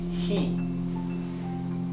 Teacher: la H no es del todo muda, por lo tanto es como una exhalación. Aquí lo he escrito con G para que lo leáis he, pero es más suave que la G del castellano.